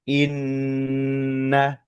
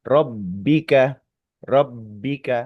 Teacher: Jadi lebih lama untuk pengucapan huruf nun tasdid ataupun mim tasdid. Lebih lama dari semisal ba tasdid.